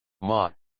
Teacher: a sharp falling tone imagine the sound of giving a stern command · fourth tone, a sharp, falling tone.